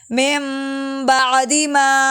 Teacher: نون ساکن کے بعد اگر با آ جائے تو اس نون کو میم سے بدل دیتے ہیں ، یہ والا غنہ ہو رہا ہے، مِن بَعْدِ مَا أَهْلَكْنَا